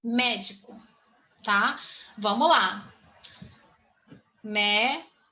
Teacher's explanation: Então, a terceira sílaba é a tônica